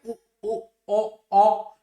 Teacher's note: उसके बाद हमारे पास आता है वर्तुल। वर्तुल कहा जाता है गोलाकार को, जब हमारे ओष्ठों की स्थिति कैसी होती है? गोलाकार होती है